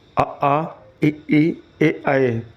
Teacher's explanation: अवृतमुखी स्वर, इनमें होंठ गोल नहीं होते।